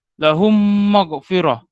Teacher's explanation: Idgham mislain ni kita tahulah mim mati ni bila dia bertemu mim mati bertemu dengan huruf mim, maka hukumnya iaitu idgham mislain. Idgham mislain ni ia dibaca dengan dengung 2 harakat. · Ada saya nyatakan di situ apabila mim mati ni dia bertemu dengan huruf mim, maka bacaannya adalah memang berdengung 2 harakat